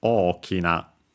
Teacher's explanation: Accented on the first o, okina.